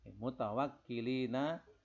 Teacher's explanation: Mutawakkilina nonnya dimatikan, disukun jadi mat arid lisukun dibaca panjang